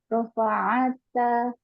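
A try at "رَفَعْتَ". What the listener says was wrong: Rofa' disukun. Ainnya disukun.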